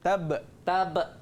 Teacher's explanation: Kena dia tak boleh melantun terus sikit. Bunyi dia kena melantun. Dia kena lantun sikit. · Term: bunyi memantul